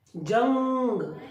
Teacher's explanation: सारी ध्वनि नाक से ही बाहर आएगी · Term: अनुस्वार